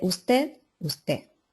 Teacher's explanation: pérdida de las consonantes finales